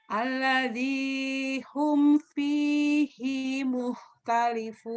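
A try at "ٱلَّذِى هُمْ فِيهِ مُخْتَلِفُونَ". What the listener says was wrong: Finya pendek. Alladzi hum fihi mukhtalifun.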